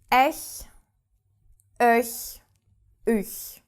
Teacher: Very soft and not in the throat.